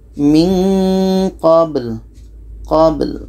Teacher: Jadi ba ini qalqalah, ada pantulan